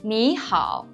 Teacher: When one third tone comes before another third tone, the first tone is pronounced as a rising tone, which is the second tone.